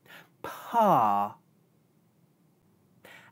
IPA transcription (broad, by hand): p